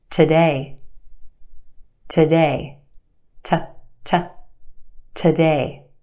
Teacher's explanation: a we stretch that sound and put it in the spotlight the first syllable is where we have our schwa sound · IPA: tə-ˈdeɪ